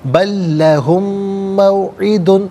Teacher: عذاب بل لہم موعد، لہم میں میم ساکن ہے، اس کے بعد موعد کی میم ہے، میم ساکن کو میم کے ساتھ ملائیں گے، میم کی آواز کو غنے کے ساتھ ادا کریں گے۔